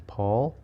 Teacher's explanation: P is in Paul, the voiceless bilabial stop